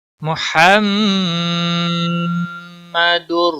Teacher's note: ہا کا خاص خیال رکھنا ہے، وسط حلق والا ہے۔ محمد، یہ جو ریڈ کلر ہے یہ گناہ کی نشانی ہے، میم مشدد اور نون مشدد جہاں پر بھی آئے گا وہاں گناہ ہوتا ہے۔